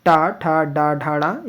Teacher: ट ठ ड ढ ड़ यह मूर्धा से बोले जाते हैं